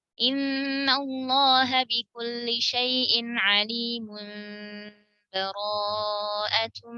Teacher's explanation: Kalau wasal, satu nafas semuanya. Tersambung.